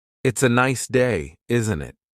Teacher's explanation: The tone going up at the end tells the listener that you're asking a question.